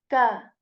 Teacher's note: this letter is articulated when the back part of our tongue it touches the soft as well as hard palate, right? So you say ka. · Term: kaf